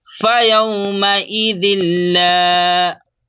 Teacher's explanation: लाम अलिफ ज़बर ला अलिफ मद्दा को एक अलिफ के बराबर खींच कर पढ़ते हैं